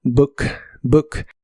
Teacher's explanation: la doble o se pronuncia como una u corta y explosiva